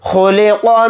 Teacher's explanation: قاف کو ساکن بنا کر پڑھیں گے حالت وقف میں، اور قاف ساکن ہوگا تو قاف کے اندر قلقلہ بھی کریں گے